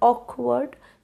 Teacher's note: when I said the word awkward it has two syllables I stressed on the part Oak